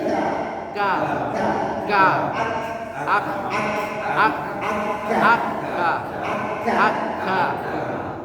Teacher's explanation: Hamas itu kayak ada udara tertiup sedikit. K. Kalau dia disukun, dia tidak mandek, tapi ak. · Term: sifat hamas